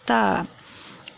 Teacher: زبان کا سرا سامنے کے اوپر والے 2 دانتوں کی جڑ سے لگاتے ہیں تو ادا ہوتا ہے تا